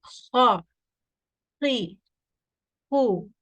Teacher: the back of the tongue is raised. It is coming in contact with the upper throat, which is giving that kha, that full mouth feeling. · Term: heavy sound